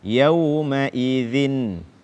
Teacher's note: tidak membaca huruf dzal dengan tepat sesuai dengan makhraj atau menggantinya dengan zai. Yauma idzin, bukan yauma izin.